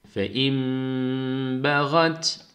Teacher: Yani burada şu nunun yerine mim okuyoruz. Ses tutuluyor. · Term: İklap